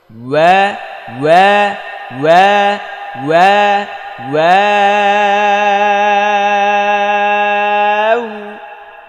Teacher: প্রথম ঠোঁটটা গোল করতে হবে, তারপর আবার চ্যাপ্টা, তারপর গোল।